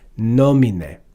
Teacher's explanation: E is short, so we're not going to put accent on a short vowel. So it moves to the third to last syllable